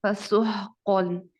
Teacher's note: आप देखें यहाँ पर फसुहक़न में सीन को हम स्वाद नहीं बनने देते। सीन में एक सीटी की आवाज आती है, इसको नरमी से नहीं अदा किया जाता बल्कि सीटी से अदा किया जाता है।